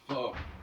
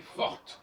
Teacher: fort, on n'entend pas le T, et forte, on entend.